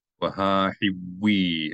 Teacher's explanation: this dagesh in the vav is just telling you to elongate the consonant sound of the vav a little bit.